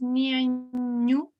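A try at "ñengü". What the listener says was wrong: La G, recordar que es un sonido NG, es como una NG pero gangosa, es como Niengu, ngu, Niengu.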